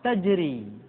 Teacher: ro dibaca tipis ketika dia berharakat kasrah